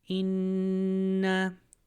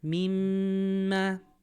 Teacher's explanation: The whole top lip and the whole nose is vibrating. · Vibration on the nose, vibration on the top of the lip. That vibration is called ghunna.